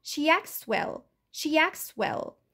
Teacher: صوت التي كمان او ت ساوند اختفى علشان لقيت عندي consonant cluster ك ت س و.